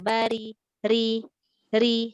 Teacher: Takrir tu dia sebanyak 2 lantunan sahaja.